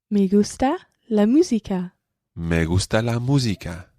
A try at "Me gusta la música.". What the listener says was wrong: Me gusta la música. Okay, just watch your U sound. Me gusta la música.